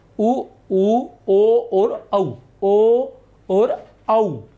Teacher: होठ जो है वो वृत्ताकार हो जाते हैं